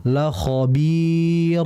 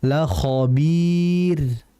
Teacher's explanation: La khaobir tidak tipis la khabir seperti itu. Jadi rnya harus dibaca tipis bila sebelumnya ada mad yang ya mati.